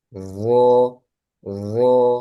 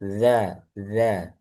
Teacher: Sa, zal, dan zo itu sama makhrajnya. Bedanya kalau zo dia tebal.